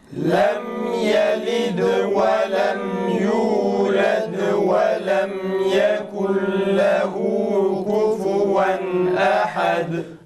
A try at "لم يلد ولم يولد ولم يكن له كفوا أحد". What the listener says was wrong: Yalnız yekun kelimesini okurken yayı biraz uzatıyoruz, farkında değilsiniz. Yekun değil. Velem yekul velem yekul şeklinde çıkıyor, biraz uzatılıyor. Buna dikkat edelim.